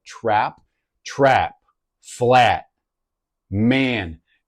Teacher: That flatness of the a sound as in trap. It's a raising of that vowel